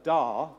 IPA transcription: da